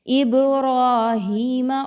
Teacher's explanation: اب یہاں پہ بڑی مد ہے تو اس کو 5 حرکات کے برابر لمبا پڑھتے ہوئے اب پہ قلقلہ کرنا ہے